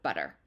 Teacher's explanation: pronounced as we say it in most American English dialects with that d sound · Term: co-articulation